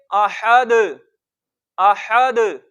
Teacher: دال پر کلکلا، اس کی جو جنبش ہے سب سے زیادہ درجے والی ہے وہ ہوگی، کیونکہ ادھر ہم حرف کلکلا کو خود ساکن کر رہے ہیں اس وجہ سے.